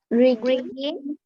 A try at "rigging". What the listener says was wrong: This is not ringing, okay, it's rigging, okay. Rigging.